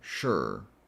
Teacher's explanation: And then what you do is you're going to take that sh sound shh and go straight to the r sound. just kind of like skipping the vowel sure. And that's it.